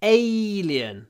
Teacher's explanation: the stress is on the first syllable it's alien so lots of Y because it's the stress syllable